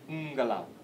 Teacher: See how the N is a little longer?